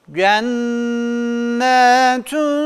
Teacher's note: sakin olarak geldiklerinde harfin üzerinde bir titretme uyguluyoruz harfi yerinden sarsıyor ve kalkale uygulamasını icra ediyoruz